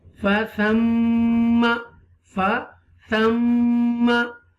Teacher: To take sound into your nose and pause for a moment, hold for a moment into your nose. It's called a nasalization. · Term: gunna